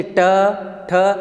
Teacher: आपकी जीभ जो है उल्टी होकर वहाँ पर ऊपर टकराएगी, तो इससे आपके इसका उच्चारण स्थान बनेगा। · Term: मूर्धन्य